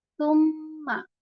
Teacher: سما میں آپ یہاں پر ہوٹ گول کر کے پڑھیں گے. سما، اور یہاں پر میم جو ہے وہ تشدید کے ساتھ ہے، اس لیے ہم اس پہ یہاں پر غنہ کر کے پڑھیں گے. اور یہاں پر ہم غنہ تھوڑا سا لمبا غنہ کریں گے، کیونکہ جب میم کے اوپر تشدید آتی ہے تو پھر آپ اس کو وہاں پر لمبا غنہ کر کے پڑھتے ہیں.